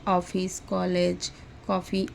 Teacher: यह हिंदी के आ और ओ के बीच की ध्वनि है, अतः यह स्वर ध्वनि है।